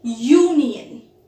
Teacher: So here, we get the sound Y. Y is not a vowel sound. It is a consonant sound. So, we would say a union and not an union.